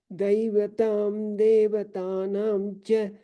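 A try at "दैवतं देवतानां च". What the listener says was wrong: Well, Here, I don't think I heard the nakara. Daivatan devatanancha.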